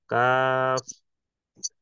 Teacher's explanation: জিহ্বার গোড়া হইতে একটু আগে বাড়াইয়া তার বরাবর উপরে তালুর সঙ্গে লাগাইয়া